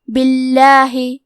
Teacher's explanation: لفظ الجلالہ مطلب کلمت اللہ کے لام کا حکم ہے ترقیق، لہذا ہمیں حرف اللام کو پتلی آواز میں پڑھنا ہے.